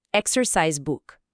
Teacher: na expressão toda, exercise book, a força principal geralmente cai em exercise.